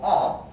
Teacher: the vowel ah is a mid back lax vowel distinguished from the vowel o only in the feature tense